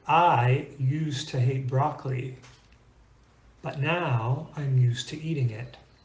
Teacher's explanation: two idioms in English that make use of the word use, but in most dialects of English that I've heard, the S still sounds like an S